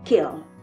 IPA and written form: kɛɔrl (keorl)